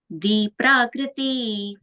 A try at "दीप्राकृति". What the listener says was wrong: And the T, you, that Prakriti, T is short E, okay, with ends there. So be careful not to stretch it as Prakriti. It's Prakriti.